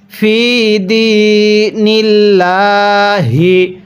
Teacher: দেখুন আল্লাহ শব্দের এই লাম যে আছে, এই মাঝখানে লামের পূর্বের এই হরফটির নিচে জের, তাহলে আল্লাহ শব্দের পূর্বে জের থাকলে আল্লাহ শব্দটিকে বারিক করে পড়তে হয়, অর্থাৎ চিকন করে পড়তে হয়।